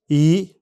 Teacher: इस दीर्घ स्वर के उच्चारण में भी जीभ मुंह के आगे और ऊपर रहती है तथा होठ फैले रहते हैं। यह स्वर इ से अधिक समय तक बोला जाता है।